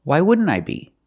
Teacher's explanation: the NT and wouldn't is between vowels so you don't really hear the T